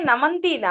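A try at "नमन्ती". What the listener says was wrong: నమంతీనండి, దీర్ఘము గౌరీ శబ్దం లాగా. మీకు కనుక అది హ్రస్వైకారం అయితే అప్పుడు అది లట్లకారము, ప్రథమ పురుష బహువచనము. దీర్ఘం ఉంది కాబట్టి ఇది మీకు దాని ఏమంటారు శత్రు ప్రత్యయంత స్త్రీలింగము, ఏకవచనం. నమంతి దీర్ఘం గౌరీ శబ్దం లాగా దీని రూపాలు ఉంటాయి.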